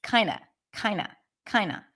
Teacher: notice how the words the phrase kind of is pronounced it's kind of kind of kind of you don't even hear the D